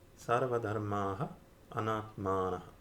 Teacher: The visarga is dropped in front of a. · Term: sandhi